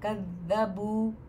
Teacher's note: قاف پھر یہاں پہ موٹا ہوگا، بو پہ دیکھیے واو ساکنہ اس کے پہلے پیش ہے نا، تو دو حرکت